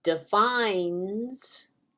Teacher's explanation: However, if I add an S to defines, you don't hear the E at all. All you hear is the N going into the S.